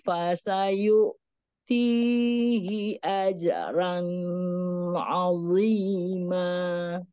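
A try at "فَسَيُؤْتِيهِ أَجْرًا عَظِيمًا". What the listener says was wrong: Di situ nggak boleh ditahan ya, karena itu izhar. Izhar dibaca jelas, tidak ditahan. Fasayu'tihi ajran 'azima. Nggak boleh ditahan. Ajran 'azima.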